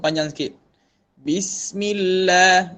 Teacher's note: Dia zaman huruf dia sin ni dia ada rokhawah. Zaman huruf dia panjang sikit.